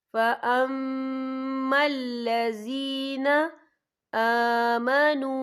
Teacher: यहाँ मीम मुशद्दद है तो यहाँ पर गुन्ना होगा